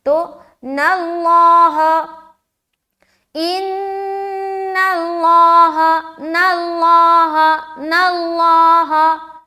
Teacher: ان اللہ، ان اللہ، نون کو موٹا مشدد کا غنہ کریں گے. ان اللہ، لفظ اللہ کلام موٹا کیونکہ اس سے پہلے زبر ہے نون کے اوپر.